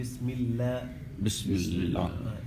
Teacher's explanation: یہاں لفظ اللہ کو موٹا نہیں پڑھیں گے